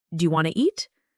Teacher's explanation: Sometimes letters are dropped like the T in want too. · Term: connected speech